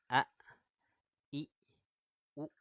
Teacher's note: huruf hamzah ini dia tertahannya suara. Ada memiliki sifat syiddah.